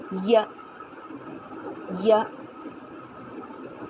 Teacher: یہاں پر زبان کے بیچ کا حصہ تالو کی طرف اٹھانا ہے، ٹھیک ہے۔ یا جبکہ نوک جو ہے یعنی زبان کی نوک جو ہے یہ نیچے دانتوں کے ساتھ بھی لگانی ہے، زبان کی نوک کو بھی لگانی ہے اور بیچ کا حصہ بھی۔